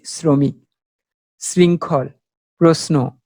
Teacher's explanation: বানানে তালব্য আছে কিন্তু উচ্চারণ করছি দন্তস উচ্চারণ।